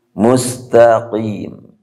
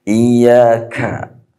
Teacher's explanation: Harus ada keluar udara ta-nya. Qaf ditahan udara, kaf harus keluar udara.